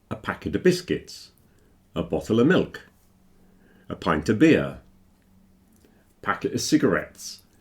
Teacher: So when you have a something of something, carton of milk, a box of chocolates, a packet of crisps, Normally, when we're speaking very quickly, you don't hear the F in of.